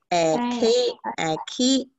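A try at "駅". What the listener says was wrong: 嗯 ， 但 是 重 音 在 第 一 个 音 上 是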